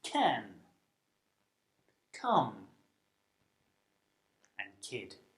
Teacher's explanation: the sound it's defined by the position of your tongue and it's a stop sound which is a sound made by building up air pressure by stopping air flow and then releasing it in this case you stop the air flow between the middle · The C Sound is made through the mouth and is unvoiced which means that you don't use your vocal cords to make the sound · you stop the air flow between the middle of your tongue and the top of your mouth to produce the sound